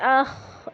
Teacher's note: اسی طرح اس کے آگے ہے ہمارے پاس خو، تو اس میں پڑھیں گے اخ، اس میں خرخراہٹ ہوگی، اس میں بھی جو ہے وہ سانس کی آواز شامل ہو جائے گی